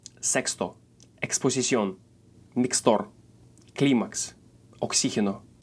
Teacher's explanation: If it's positioned in the middle or at the end of the word, it makes the sound ks, just like in English.